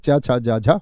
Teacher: जिनमें जीभ स्पर्श के साथ-साथ में संघर्ष भी करती है। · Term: स्पर्श संघर्षी